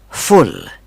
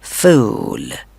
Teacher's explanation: फुल में shortest sound है उ, जबकि फूल में ऊ साउंड लॉन्ग साउंड है.